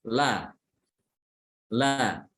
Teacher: Ujung lidah nempel pada langit mulut, setelah itu dipisahkan ya. Terpisahkan dengan membuka apa? Membuka mulut ya. La ya. Kalau dia dhammah, lamnya dhammah disertai dengan memoncongnya bibir ya. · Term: Lam fathah